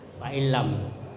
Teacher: dia menyatu dengan lam, fa'illam, dan tidak mendengung